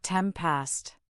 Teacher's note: In fast speech, ten past often sounds like temp past. The nen assimilates to because it's followed by.